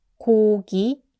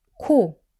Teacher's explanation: So to get ㄱ right, keep it soft don't push too much air for ㅋ give it bigger puff of air